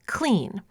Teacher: where the voiced /l/ becomes voiceless following the voiceless [k] because of perseveratory assimilation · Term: liquid devoicing